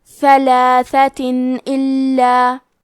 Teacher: ہم یہاں تنوین ظاہر کریں گے اور اسے نون ساکن پڑھیں گے اور بغیر غنہ سے یہ حکم کو ادا کریں گے